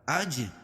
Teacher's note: جیم پر قلقلہ کیونکہ یہ حروف قلقلہ کے 5 حرفوں میں سے ہے، جب ان پر جزم ہو تبھی قلقلہ ہوگا.